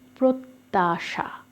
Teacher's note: প্রত্যাশা সঠিক উচ্চারণটা দেখো এখানে কিন্তু রয়েছে প্রত্যাশা জফালা নেই কিন্তু জফালা মাঝখানে থাকার কারণে সে তকে দৃত্ত করে দিয়েছে